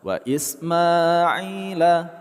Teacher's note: Ma, kita panjangkan dua harakat. Ai, kita panjangkan dua harakat.